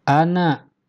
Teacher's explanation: Ana ini perhatikan di sini walaupun ada huruf alif mati setelah fathah tetapi tidak dibaca panjang.